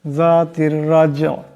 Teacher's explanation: রার উপর জবর আছে, রাকে মোটা আওয়াজে পড়তে হবে